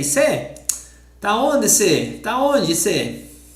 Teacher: It's not common for me, but for people in the north of Brazil, they use all the time this. They don't say você. They just say, cê.